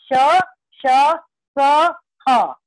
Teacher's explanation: इन चारों का जब उच्चारण हम करते हैं तो हमारी जो मुख में वायु है वो घर्षण करती हुई गर्म होकर बाहर निकलती है। ये ऊष्म व्यंजन कहे जाते हैं।